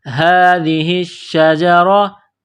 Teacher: را کے اوپر زبر ہے تو را کو موٹا کرنا ہے